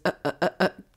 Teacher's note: start on an open vowel and thus require a glottal stop to actually be pronounced correctly